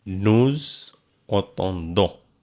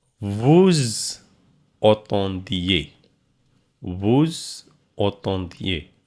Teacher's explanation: The S followed by vowel. So here S pronounced like Z. That is called liaison. Liaison in French.